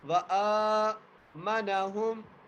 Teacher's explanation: اب واو کے اوپر زبر، حمزہ کے اوپر کھڑی زبر ہے، کھڑی زبر آنے کی وجہ سے حمزہ کو ہم ایک الف کی مقدار کھینچ کے پڑھیں گے۔ وآمنہم، میم کے اوپر زبر ہے اور میم کو بغیر کھینچے پڑھیں گے، نون کے اوپر بھی زبر ہے، نون کو بھی بغیر کھینچے پڑھیں گے۔